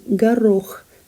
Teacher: and it's certainly got two o's which is very confusing but it's pronounced as garroch the stress falls on the second syllable